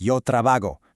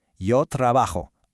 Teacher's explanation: In Spanish, the letter J has a strong, breathy H sound, almost like a little scrape at the back of your throat. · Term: J sound